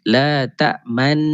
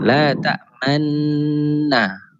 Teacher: Satu cara dia seperti mana yang kita belajar dulu adalah muncungkan mulut kita. La ta'man, dengung tetap dengung tapi mulut kita bawa kepada baris depan. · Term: ishmam